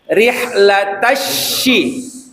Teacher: Shinnya letakin di tengah lidah seperti C tapi dia tidak menempel.